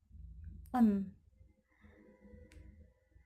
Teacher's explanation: The place of articulation is alveolar. The manner of articulation is nasal. N sound include voice.